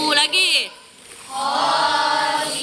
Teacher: Huruf wawunya bacanya 2 harokat. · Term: Idgham biguna